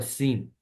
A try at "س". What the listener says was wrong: है, थोड़ी सी सीटी ज्यादा करें.